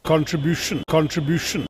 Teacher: See the emphasis on the third syllable.